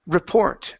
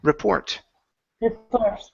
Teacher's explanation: The stress is on the end.